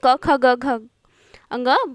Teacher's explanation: क वर्ग के सभी वर्ण कंठव्य कहलाते हैं, क्योंकि क ख ग घ अंग उच्चारण करने से कंठ से आवाज आती है